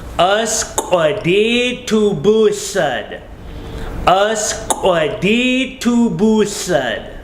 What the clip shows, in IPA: ʔəsk’ʷədiitubułəd